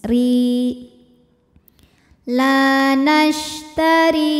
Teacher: Huruf ro dibaca secara tarqiq sebab ro berharokat kasroh. Cara bacanya, ro dibaca tipis. · Ri hukumnya adalah mad tabi'i zahiri sebab ada ya sukun didahului harokat kasroh. Cara bacanya, ro dipanjangkan 2 harokat.